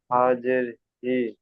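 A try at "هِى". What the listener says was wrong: তাহলে হা জের নয়, দেখেন হা খাড়া জের আছে, তাই না?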